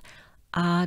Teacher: notice we don't pronounce the h it starts with the ah sound